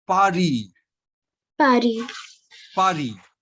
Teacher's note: so S is not pronounced